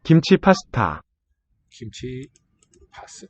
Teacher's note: so these ones pasta first and last little here are aspirates they have a lot of breath coming out with the stops